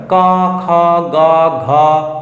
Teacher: ক খ গ যখন আমরা বলছি না কোন কিছু দরকার নাই কন্ঠ দরকার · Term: কন্ঠ ব্যঞ্জন